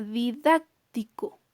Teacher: tenemos una mayor fuerza de voz en la antepenúltima sílaba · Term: palabras esdrújulas